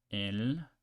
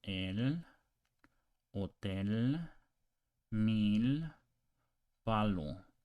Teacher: English L, but with the tip of the tongue touching the roof of the mouth.